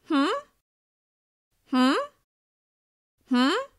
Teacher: The rising intonation signals that you're open to hearing what the other person has to say.